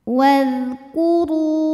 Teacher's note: Huruf ra dibunyikan secara tafkhim karena berbaris dhammah, maka dibacanya tebal. Wadhkuru. Ru matobi'i dhahiri karena ada waw sukun didahului baris dhammah, maka dibacanya panjang 2 harokat.